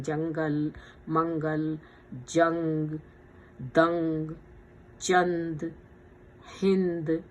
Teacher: یہ نون اس میں ساکن جو بیچ میں آ رہا ہے وہ ناک میں چلا جاتا ہے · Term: اخفا